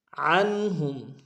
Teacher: عین کو نون کے سامنے لائیں گے، یہاں پہ اظہار ہوگا نون ساکن میں